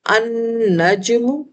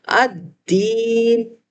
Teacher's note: لام یہاں پر خاموش ہے کیونکہ حروف شمسی مشدد ہو جاتا ہے۔ جب بھی حروف شمسی کے اسم نکرہ کو اسم معرفہ بنایا جاتا ہے تو حروف شمسی مشدد حالت میں آ جاتے ہیں، اور مشدد حالت میں آنے کی وجہ سے لام کا جو حرکت ہے وہ ختم ہو جاتی ہے، لام خاموش ہو جاتا ہے۔